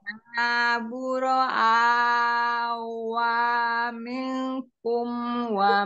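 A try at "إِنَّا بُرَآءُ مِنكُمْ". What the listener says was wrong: wa ini u. Bukan wa, tapi ini wadahnya Hamzah aja ya. Jadi u yang dibacanya. Buro'a'u minkum. A-nya yang panjang, U-nya satu harokat ya. Inna buro'a'u minkum.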